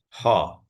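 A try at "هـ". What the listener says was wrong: Light. Light. Light. Yeah, it is right, but you have to make it light, not heavy.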